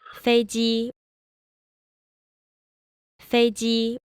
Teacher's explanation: the second syllable even though it's still first tone it's very slightly lower